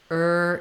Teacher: ER it's just static and it doesn't move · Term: ER sound